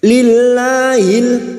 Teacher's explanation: Lam jalalah yang didahului kasroh kita baca tarkik atau tipis.